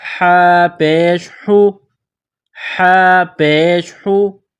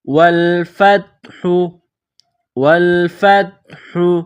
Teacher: گلے کے درمیان سے ہا کو نکالیں گے، ہا کو ادا کریں گے، ہا کے اوپر پیش ہے۔